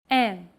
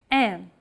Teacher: lower your soft palate and the back of your tongue, unblocking the nasal passage and allowing air to pass through the nasal cavity and out through the nose. Imagine you're humming with your mouth open and add the E vowel sound to it. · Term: nasal vowels